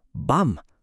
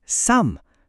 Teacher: Pansinin niyo pag sinabi niyo ung tunog, natural na nagsasara yung mga labi ninyo sa dulo. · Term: M sound